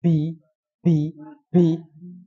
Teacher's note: banyak suara yang menghembus di huruf ba